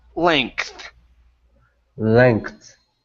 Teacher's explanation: instead of saying length, okay, and pronouncing a voiced G, okay, switch it to an unvoiced K, and then now pronounce the TH at the end